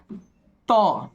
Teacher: त का उच्चारण स्थान होगा वो हमारा दंत से होगा